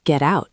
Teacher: Your tongue is used to stopping for the tea. We are teaching it to just tap